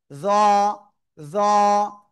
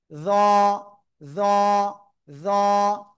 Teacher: এই যে উপরে একটা নোক্তা, এটা জিহ্বার আগা উপরে দুই দাঁতের আগায় লাগাবো, লাগিয়ে মোটা আওয়াজে আমরা উচ্চারণ করব।